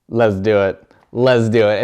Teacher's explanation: Eso suena bastante americano. Ella se comió la T en esta frase 2 veces.